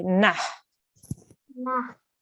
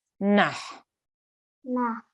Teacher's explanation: Remember, this is the ha which comes from the middle of your throat